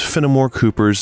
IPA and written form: ˈfɛnɪˌmɔr ˈkupərz (Fenimore Cooper's)